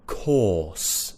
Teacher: because there's a consonant there after the r that means i'm going to replace the r with a vowel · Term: an or sound